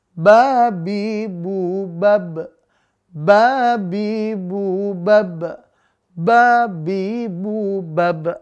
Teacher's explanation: Nah, di huruf ba tadi itu nggak ada udara yang keluar. Maka udaranya tertahan. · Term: jahar